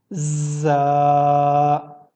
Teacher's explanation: تھوڑی سیٹی کی آواز بھی آپ سن سکتے ہیں اس کے اوپر